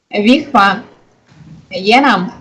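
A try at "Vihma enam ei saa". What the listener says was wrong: Итак, исправьте опять ту же самую ошибку произношения. Но не Е, нету Е. Энам. Вот это енам, это самая страшная, грубая ошибка вот русского. Ни в коем случае не енам. Это очень грубо.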